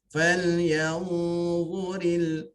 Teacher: Falyanzuril dha hujung lidah, hujung gigi